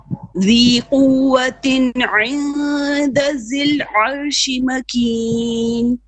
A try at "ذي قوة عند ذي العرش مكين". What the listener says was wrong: عند ذل. Another dal, okay? ذل. ذي قوة عند ذل, not zil. I'm hearing zil, unless the audio is not good. It's ذل, okay?